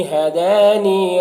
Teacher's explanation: دی میں یا مدہ ہے، ایک الف کے برابر کھینچیں گے۔